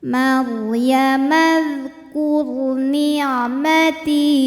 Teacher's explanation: Huruf ra sukun dibaca secara tafkhim karena harokat huruf sebelumnya dhammah, Maka cara bacanya ro dibunyikan dengan tebal.